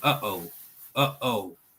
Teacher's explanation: It's called a glottal stop. As in uh-oh, that stop in between the H and the O